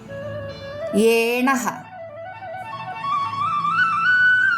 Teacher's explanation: തൊണ്ടയും അണ്ണാക്കും ഒരുപോലെ ഉപയോഗിക്കുന്നു മലയാളത്തിലെ എ എന്ന ദീർഘസ്വരത്തിന്തു തുല്യം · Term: കണ്ഡതാലവ്യം